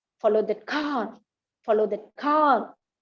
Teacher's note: The car is given a rising pitch there. Okay, this is called rising intonation.